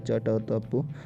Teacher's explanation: तो अघोष व्यंजन भी आपके जो वर्ग होते हैं क, च, ट, त, प, इनका हर वर्ग का पहला और दूसरा वर्ण जो होते हैं ये अघोष होते हैं